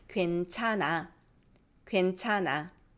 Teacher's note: The H becomes silent when it's followed by 이응. Because it's all throat air going away, right? So we'll just weaken it and just put casual air.